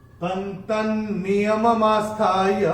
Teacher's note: ऐसे ये जो त के ऊपर अनुस्वार है उसके बाद का अक्षर है न, और अनुस्वार के बाद जब न आएगा तो अनुस्वार का उच्चारण होगा न